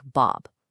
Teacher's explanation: Take the ah sound in a name like Bob, a sound that just doesn't exist in Italian.